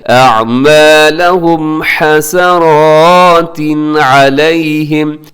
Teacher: آگے أَعْمَالَهُمْ حَسَرَاتٍ عَلَيْهِمْ، حسرات یہاں پہ تنوین ہے اور اس کے بعد علیہم کے شروع میں عین ہے، تنوین کے بعد عین، مطلب کیا ہے کہ یہاں پہ اظہار کرنا ہے